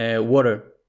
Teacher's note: en el inglés americano, muchas veces la T y la D se pronuncian como una R